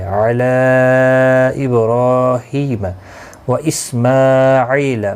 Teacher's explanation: ایک الف کی مقدار کے برابر کھینچ کر پڑھیں گے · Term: مدہ